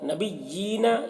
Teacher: یا کے نیچے کھڑا زیر ہے، اسے ایک الف کے برابر کھینچ کر پڑھیں گے۔